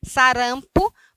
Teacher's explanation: para nós a sílaba tônica é a penúltima, tá? Que é ran.